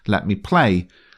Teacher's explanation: Bassanio uses 2 unstressed syllables followed by a stressed one